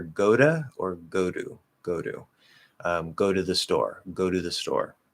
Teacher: you will hear the preposition to being pronounced with a D sound, especially a flapped D sound